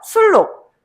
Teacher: 네. 유음화입니다. 아시겠죠? 발음할 때 순록이라고 발음하지 않습니다.